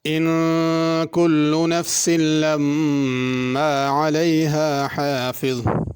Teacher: ان پہ غنہ کرنا ہے، لما اس پہ بھی غنہ کرنا ہے، حافظ میں بڑی ہا ہے، اس کو چھوٹی ہا نہیں پڑھنا، اور آخر میں ضا ہے، اس کو ضاد یا دال نہیں پڑھنا۔